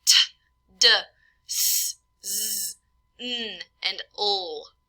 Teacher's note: we have alveolar, where the tongue touches the alveolar ridge. Again, it may be classified as lingua alveolar. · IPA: /t, d, s, z, n, l/